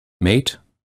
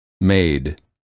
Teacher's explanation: the first word of the pair ends with the voiceless consonant and the second with the voiced one notice the difference in vowel length [Music] advice advise ice niece